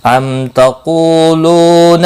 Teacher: میم ساکن کے بعد تا آیا ہے، اظہار شفوی ہوگا، غنہ نہیں ہوگا۔ قولو دونوں واو مدہ ہیں، ایک ایک الف کے برابر کھینچ کر پڑھیں گے۔